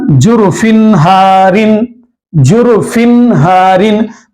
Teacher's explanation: یہاں پر تنوین کے بعد ہاں آ رہا ہے تو یہ فن میں جو نون ہے وہ نون کی آواز کو ظاہر کر کے پڑھیں گے